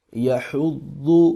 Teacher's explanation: ضاد کو لمبا نہیں کریں گے، اس کے اوپر پیش ہے اور پیش کو لمبا نہیں کرتے۔